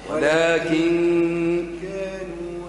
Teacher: اخفي النون مع الغنة